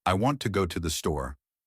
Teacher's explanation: Which words are stressed? Want and store. The words with the most meaning. It sounds like da, da, da, da, da, da.